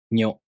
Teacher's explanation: the tongue moves from the [ɲ] consonant to the [o] vowel